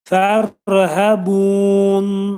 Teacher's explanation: Nun hərfinin altında kəsrə atılır. Nunun üstünə sükun gəlir və nun hərfi aşkar oxunur.